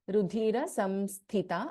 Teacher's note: Tha is Mahaprana, first Tha here. Rudhira Samsthita, and the last letter Tha is Alpa Pranata.